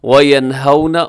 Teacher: یہاں واو ساکن سے پہلے زبر، تو یہاں واو لین ہے، نرمی سے پڑھیے گا۔